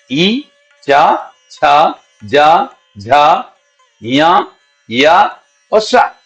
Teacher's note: तालव्य है इसको हम कहां से बोलते हैं ताल से बोलते इस समय जीभ हमारी थोड़ी ऊंची होती है और हमारा अंदर से आने वाला पवन जो है ऊपर तालू के साथ जाके टकरा के बाहर आता है